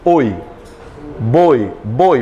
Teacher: Como não passa pelo nariz, ele é um ditongo o quê, gente? Oral.